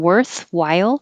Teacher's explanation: has a lot of movement from were for the r coming back were and then forward for the th and then back for the l